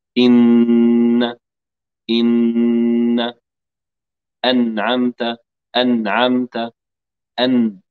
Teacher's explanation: يشترك في إخراج النون جزئين، جزء خيشومي تمام، وجزء من الفم من طرف اللسان، هذا الطرف هنا.